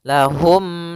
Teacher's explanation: sambil menyempurnakan daripada e huruf mimnya bibir kita dirapatkan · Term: izhar syafawi